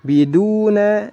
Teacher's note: Biduna dibaca panjang 2 harokat, ya, 2 harokat karena ada wawu sukun sebelumnya dhammah. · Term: mad tabi'i